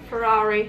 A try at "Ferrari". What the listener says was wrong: That was a good rolling.